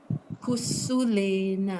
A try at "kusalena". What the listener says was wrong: Not kusu, Kusalena.